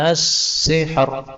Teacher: ini a-nya boleh dipanjangkan. As-sihr, panjangnya sampai 6 harokat.